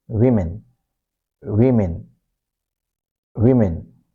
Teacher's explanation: when we say W, our lips are rounded